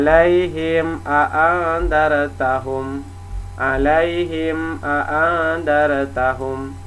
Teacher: artinya terang jelas dan tanpa syafawi artinya bibir jadi seharusnya pawi artinya jelas terang dan tampak di bibir jadi enggak ada dengung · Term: izhar syafawi